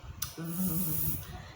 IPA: ð